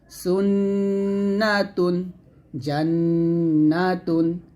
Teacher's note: করে ধরে রেখে এক থেকে দুই আলিফ টন গুনা করবেন আর নুনের গুনাটা জিহ্বার আগা তার বরাবর উপরের তালো সঙ্গে লাগিয়ে গুন্নাটা আদায় করবেন